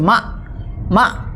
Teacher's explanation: অনেকে মাক মাক কাফের উচ্চারণ করি, এখানে কাফের উচ্চারণ হবে না